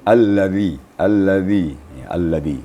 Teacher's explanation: gigi kita tidak boleh dirapatkan dan ujung lidah disentuhkan ke gigi atas maka kedengarannya akan lembut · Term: Zal